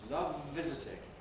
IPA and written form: ˈlʌv ˈvɪzɪtɪŋ (love visiting)